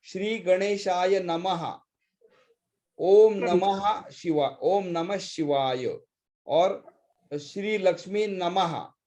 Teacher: that visarga when it comes at the end of the statement, that is always sung as aha